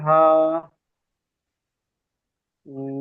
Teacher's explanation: হায়ের উপরে খারা জাবার আছে, খারা জাবার এক আলিফ পরিমাণ সমতুল্য, সুতরাং খারা জাবার এক আলিফ আলিফ মাদ্দার পরিমাণ সমতুল্য টান একে দিয়ে একালি পড়তে হয়।